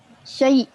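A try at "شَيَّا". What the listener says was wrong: Kan dia baris atas. Dia kan baris atas. Kalau syayyi, itu baris bawah. Syayyi. Baris atas, ya.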